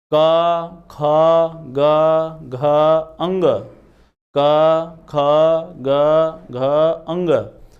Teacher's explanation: क बोलते हैं श्वास कम ख बोलते हैं श्वास ज्यादा ग बोलते हैं श्वास कम घ बोलते हैं श्वास ज्यादा अंग बोलते हैं श्वास कम ना तो देखिए वर्ग ये वर्ग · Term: अल्प प्राण और महाप्राण